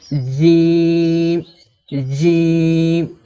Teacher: তো জিমের মাখরাজ কি? এই জিম হরফকে জিহুবার মাঝখান থেকে শক্ত করে পড়তে হয়